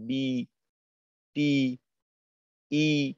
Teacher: জেরের উচ্চারণ করার সময় জিহ্বার মধ্যখান একটু উপরের দিকে ওঠে, জিহ্বার মধ্যখান উপরের দিকে ওঠে, উপরের তালুর সঙ্গে লাগে না।